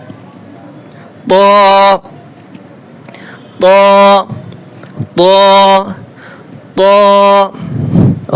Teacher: ত হরফ মোটা হবে, 1 আলিফ টান হবে